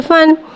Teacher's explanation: फ़ा को एक अलिफ यानी दो हरकत के बराबर खींच के पढ़ेंगे। फ़ा पे दो ज़बर है, दो ज़बर को मुँह खोल के अदा करके पढ़ेंगे।